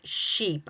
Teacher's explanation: My tongue is high. My mouth is closed. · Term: e sound